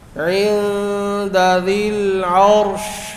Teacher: وقف میں را کی آواز بھی جاری ہوگی، شین کی آواز بھی جاری ہوگی